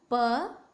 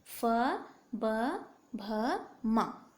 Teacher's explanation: दोनों होठ आपस में मिलते हैं। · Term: पवर्ग